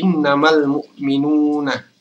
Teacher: Jadi alif lamnya dibaca dengan jelas karena ini adalah alif lam qamariyah. Yaitu manakala alif lam ini bertemu dengan salah satu huruf qamariyah yaitu mim.